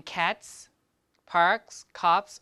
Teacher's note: these are all voiceless sounds so the s that you add the plural morpheme that you add to it must be voiceless too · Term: assimilation